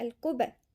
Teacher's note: نحافظ على القلقلة اللي هي تكون مفتوحة